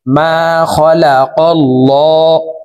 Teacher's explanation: আল্লাহ শব্দের আগের হরফে জবর আছে এই কারণে এই লামকে ল বলে অর্থাৎ মোটা করে পড়ব